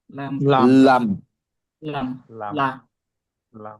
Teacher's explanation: লাম জিহ্বার আগার কিনারা দাঁতের উপরের দাঁতের মাড়ির সাথে লাগাইয়া